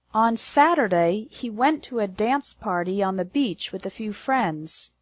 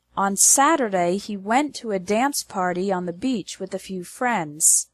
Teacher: The stress is on the words Saturday, went, dance, party, beach, and friends. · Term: strong words